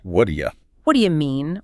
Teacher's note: The T in what turns into a soft flapped D. Okay, then the word do is completely stripped of its oo vowel, becoming just a dead attached to the previous word.